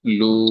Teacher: লু, 1 আলিফ না, এখানে 1 আলিফ হচ্ছে না, এখানে হচ্ছে 3 আলিফ পরিমাণ টান হচ্ছে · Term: মাদ্দে আরজি